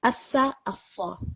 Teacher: have your mouth a little bit more rounded when you're reading the Sad.